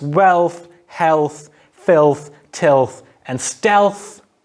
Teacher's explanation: Another version of this L occurs as velarized and dentalized before a voiceless interdental fricative th